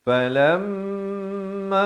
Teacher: mim sabdu dengungkan dua harakat